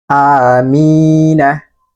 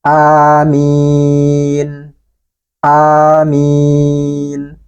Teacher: ini Amin Amina Nah ini kan hidup nih hurufnya berharakat fathah Maka kalau dia wakaf atau berhenti maka huruf nun ini disukunkan atau dimatikan